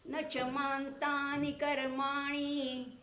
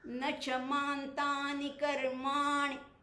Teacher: म्हणजे बघा, न च मान्तानि कर्माणि. कर्माणि, मा किंचित लांबवला आणि नी पटकन खेचून घेतला, त्यामुळे मग तो दीर्घ होण्याची शक्यता नसते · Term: ऱ्हस्व